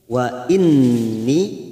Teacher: nun yang bertasdid kita dengungkan selama 3 harokat. Wa inni, ni-nya kita panjangkan 2 harokat.